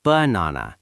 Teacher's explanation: The first a is lazy. The last a is lazy. Only the middle one is strong.